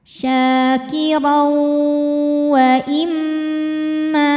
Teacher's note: Selanjutnya ada hukum idgham bi gunnah karena ada tanwin fathah menghadapi huruf waw. Cara membacanya tanwin dileburkan ke waw. Kirau, sambil kita dengungkan, kita tahan.